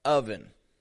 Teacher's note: people all over the world mixing up oven o v en it's spelled with an O but it's pronounced with an uh a short u uh sound